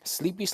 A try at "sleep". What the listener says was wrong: You said sleepy. It just says sleep, bro.